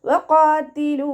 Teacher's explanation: പല്ലിനെ ചുണ്ടിൽ തട്ടിക്കാതെ നോക്കുക. ഖാഫ് ഇസ്തിഅലാൻ്റെ ലെറ്ററാണ്. അപ്പോൾ നാവിൻ്റെ ബാക്ക് മുകളിലേക്ക് പൊക്കി കൊടുത്തിട്ട് തഫ്ഹീം ചെയ്യുക കേട്ടോ. ലാമിൻ്റെ കൂടെ വൗമദ് വന്നു 2 കൗണ്ട് നീട്ടിക്കൊടുക്കുക.